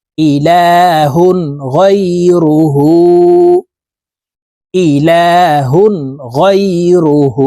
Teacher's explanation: এক আলিফ টেনে পড়তে হবে কারণ হার উপরে উল্টা পেশ আছে এই হাকে ঠোঁট গোল করে এক আলিফ টেনে পড়বো